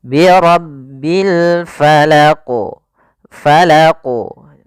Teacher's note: Kemudian pada lafal alfala di sini ada alif lam Qariah yaitu Alif lam yang kita tulis dan kita baca maka dengan jelas suara lamnya · Maka dalam membaca al-qalqalah huruf qafnya harus kita pantulkan.